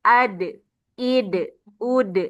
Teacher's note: huruf dal nah ketika sukun dia menimbulkan qalqalah atau pantulan